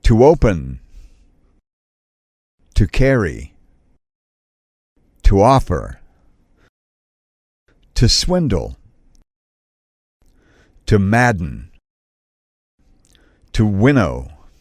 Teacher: syllables ending with a suffix o n e l or is the stress is on the first syllable